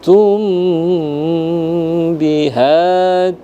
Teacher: tekan atau tahan selama dua harakat pada hukum mim mati bertemu dengan ba